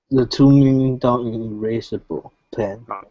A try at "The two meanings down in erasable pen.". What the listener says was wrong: Okay, pronounce that S. The two meanings. The two meanings down in erasable pen.